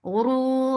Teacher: ra is heavy. For dhamma, circle your lips and make it 2 counts long.